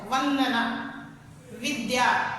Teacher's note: व का उच्चारण स्थान दांत और ओष्ठ है, इसीलिए दंतुष्ट वर्ण कहलाता है